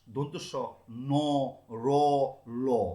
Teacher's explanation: জিহ্বার অগ্রভাগ ওপরের দাঁতের মূল স্পর্শ করার ফলে শ্বাসবায়ু বাধাপ্রাপ্ত হয়ে যে ব্যঞ্জন উচ্চারিত হচ্ছে তাকে বলা হচ্ছে দন্তমূলীয় ব্যঞ্জন। · র উচ্চারণ করতে গেলে জিভের আগাটা আমার দন্তমূলকে স্পর্শ করবেই